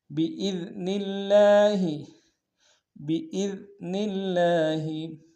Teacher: بإذن میں حمزہ کو دال کے سامنے لیں گے، دال کو باریک ادا کریں گے، نون کو لفظ اللہ کے لام کے سامنے تشدید زور دیں گے، لام کے اوپر کھڑا زبر ہے ایک امتداد میں کھینچیں گے۔